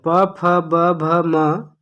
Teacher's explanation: प वर्ग प फ ब भ म, इसका उच्चारण स्थान ओष्ठ है